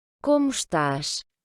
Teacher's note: le O final va se prononcer OU, et puis le S, les deux S d'ailleurs dans cet exemple-là, vont se prononcer CH. Parce que le premier S donc, est devant une consonne, le T, et puis on a un S en fin de mot.